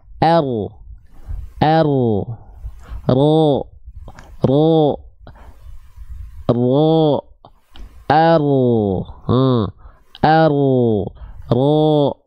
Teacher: Oh, jadi si ujung lidahnya nggak betul-betul nempel. Yang nempel tuh bagian punggung lidahnya. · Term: huruf ro